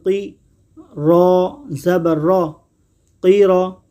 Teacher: قاف حرف مصطلحہ ہے، قاف کو ہمیشہ پر یعنی موٹا پڑھیں گے۔